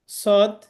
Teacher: জিহ্বার আগা সামনের নিচের দাঁতের আগা থেকে শীষ সহ মোটাভাবে আদায় হয়